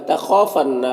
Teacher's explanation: خا حروف مستعلیہ میں سے پر پڑھیں گے، اور الف مدہ 1 الف کے برابر کھینچیں گے